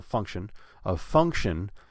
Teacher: put stress on the first syllable